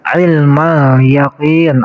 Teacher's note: Ilmal yaqin ada alif lam. Di sini alif lamnya namanya alif lam komariah. Hukumnya idhar. Jadi alif lamnya harus terbaca.